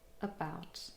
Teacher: Here, the first syllable contains only a schwa and it's unstressed. About.